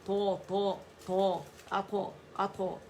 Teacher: طو موٹا لیٹر ہے اطباق والا